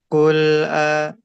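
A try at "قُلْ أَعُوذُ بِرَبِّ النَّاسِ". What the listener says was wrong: nah itu enggak mantul. Coba lagi kayak gitu, disambung.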